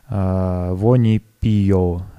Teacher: Здесь яркая особенность — это окончание «о» долгий на месте литературного «оу»